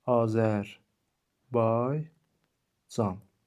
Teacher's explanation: Vurğu sonuncu saitin üzərindədir.